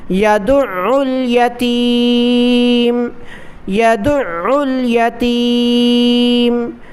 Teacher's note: فذلك الذي، فذلك الذي، فذلك الذي يدع، عین پر تشدید ہے اس لیے میں سختی کے ساتھ ادا کر رہا ہوں، اور عین کو گلے سے نکالا جاتا ہے۔ · یدع، یا زبر یا، دال عین پیش، دع عین لام پیش عل، دال کو عین کے ساتھ ملایا پھر عین کو لام کے ساتھ ملایا